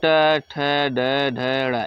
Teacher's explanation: ट वर्ग हमारा मूर्धन होता है